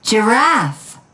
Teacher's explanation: In the word giraffe, the second syllable is stressed.